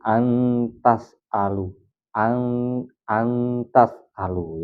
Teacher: Sedikit ada nunnya, tapi langsung masuk ke huruf tak. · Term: ikhfa hakiki